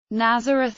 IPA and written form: ˈnæzərəθ (Nazareth)